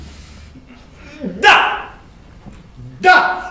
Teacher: La consonne D, par exemple, se prononce en donnant du bout de la langue au-dessus des dents d'en haut.